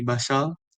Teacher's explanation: dalam bahasa Kedayan, bunyi R digugurkan